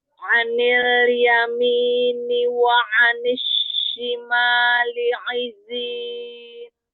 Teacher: Shin, tambahkan lagi tafashi pada huruf shin, lalu zai tambahkan lagi sofirnya.